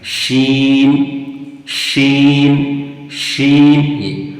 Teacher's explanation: यानी जुबान का बीच और उसी के मुकाबिल ऊपर का तालु वहां से शी निकलता है। · جیم اور شین کا مخرج سیم ہے، یعنی زبان کا بیچ اور اسی کے مقابل اوپر کا تالو، وہاں سے شین نکلتا ہے۔ شین، شین، شین۔